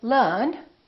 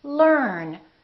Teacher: the American r is never silent it's not silent at the end of the word and also before another consonant